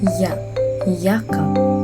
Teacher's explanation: ang harap ng dila ay dumidikit o lumalapit sa matigas na ngala-ngala